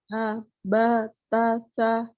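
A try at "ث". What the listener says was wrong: Ya, masih sama ta, sa begitu, sama dengan ta. Tapi ta, sa, beda. Jangan sama. Ta, sa, beda makhrajnya.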